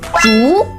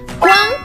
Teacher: 烛 second tone. 光 first tone.